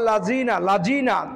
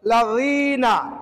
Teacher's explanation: জিহ্বার আগার সামনের উপরে দুই দাঁতের আগার সঙ্গে লাগিয়ে উচ্চারণ করতে হবে, এক কথায় নরম করে পড়তে হবে।